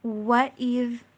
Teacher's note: وَإِذْ، وا کے اوپر ہونٹوں کو گول کرنا ہے، کمپلیٹلی جوڑنا نہیں ہے، ہونٹوں کو گول کر کے واپس پھر ان کو سلائٹلی اوپن کرتے جانا ہے، اور اس کو انگلش میں وی کی ساؤنڈ پہ نہیں بلکہ ڈبلیو کی ساؤنڈ کے اوپر پڑھنا ہے